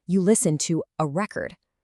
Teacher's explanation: But if you're talking about the physical vinyl object, you listen to a record stress on the first syllable